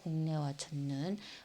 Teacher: 뒤에 있는 비음을 따라서 지도 비음으로 바뀌는 이런 현상을 비음화라고 합니다